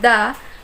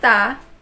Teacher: the sound da differs from ta only in the amount of time it takes for the vocal chords to vibrate after making the consonant sound give it a try make the sound da and then the